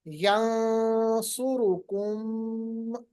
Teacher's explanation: नून साकिन के बाद सात, तो नून साकिन को इख्फा करेंगे, ऐसे पढ़ेंगे यंसुरुकुम।